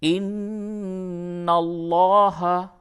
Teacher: نون مشدد ہے، غنہ ہوگا، لام کو پر کیجئے.